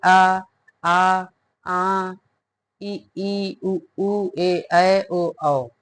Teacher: जब स्वरों के उच्चारण में वायु केवल मुख से निकलती है तो उन्हें मौखिक या निरनुनासिक स्वर कहते हैं